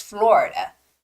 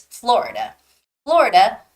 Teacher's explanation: in English it's Florida because there's a stress on oh the vowel o